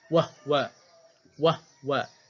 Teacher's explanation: Qalun, Abu Am, Kisai baca dengan bisukunil ha.